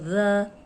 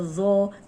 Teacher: ایک ہی جگہ زبان جو ہے وہ لگے گی اوپر سامنے کے جو 2 دانت ہیں ان کے اندرونی کنارے پہ